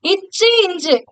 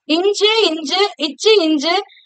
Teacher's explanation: நாக்குடைய நடுப்பகுதி அன்னத்துடைய நடுப்பகுதியை தொடுறதுனால பிறக்கும்.